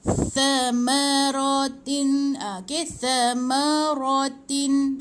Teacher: Ingat tha ni hujung lidah di antara 2 gigi.